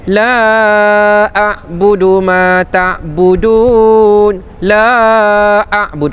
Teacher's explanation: Kita baca 4 harakat kan sebab kita wasal.